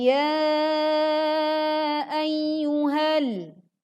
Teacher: ya dibaca panjang empat sampai lima harakat. Kini dapat kita lihat dengan mudah ada tanda layar pada huruf ya sehingga kita mampu membedakan dengan bacaan yang panjangnya dua harakat.